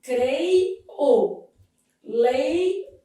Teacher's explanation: Nessa dinâmica, o E é vogal e o I é semivogal. O O que está solto é vogal. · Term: falso hiato